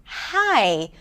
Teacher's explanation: So the consonant that we have that is a glottal consonant is as in hi, where the air is restricted here in the glottis, right? Coming out slowly for an H sound. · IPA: /h/